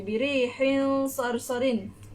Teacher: Dia bunyi sedikit dengung tapi tak kuat sangat. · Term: ikhfa